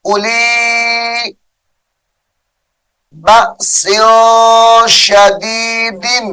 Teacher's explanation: اولی واو اضافی ہے، نہیں پڑھیں گے، حمزہ کو لام کے ساتھ ملائیں گے.